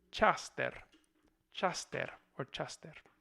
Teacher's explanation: palatalization of the k before this front vowel a, which also seems like it's turning into a diphthong a.